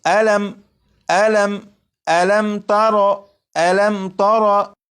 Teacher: ہے، یہ میم ساکن ہے، میم ساکن کے بعد تا ہے، جب میم ساکن کے بعد تا ہے تو اس میم ساکن میں غنہ نہیں کریں گے